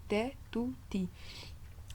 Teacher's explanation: lorsque vous mettez votre langue à l'endroit du T, c'est le même endroit du tout et c'est le même endroit du ti. C'est-à-dire qu'il ne doit pas changer entre te, tout et ti, ça tirerait un peu vers un autre point.